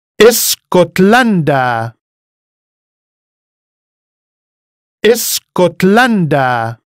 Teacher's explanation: foreign words that start with two consonants, such as sk or ch, are alien to Arabic, and so a helping sound, e, is inserted at the beginning to make them easier to pronounce.